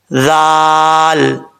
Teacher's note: ذال میں بغیر سیٹی کے پڑھنا ہے، ذال کو سیٹی نہیں آنی چاہیے